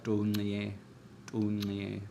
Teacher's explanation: Low tone and click, and you have the long E becoming EA.